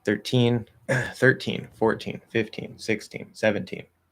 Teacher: So if it's within, like 1, 3, 1, 4, within that sort of 10 to 20 range, it's teen with a T sound. And there's stress there.